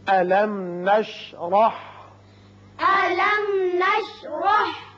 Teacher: میم ساکن یہاں اظہار شفوی ہوگا اور را کے اوپر زبر ہے، اس کو پر کر کے پڑھیں گے